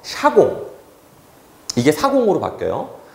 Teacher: 시옷 다음에 반모음이 탈락하는 현상이에요. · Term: 반모음 탈락